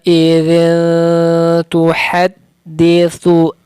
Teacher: tanwin bertemu ta atau tanwin bertemu tu didengungkan, disamarkan, ditipiskan. Cara mendengungkannya itu idzin tu.